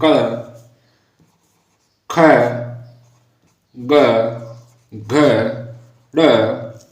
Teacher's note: यानी इनका उच्चारण स्थान कंठ है, यानी हम इनको बोलेंगे तो कंठ से ध्वनि उत्पन्न होगी। ओके विद्यार्थियों, यानी कंठ से आवाज निकलेगी। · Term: कंठ ध्वनि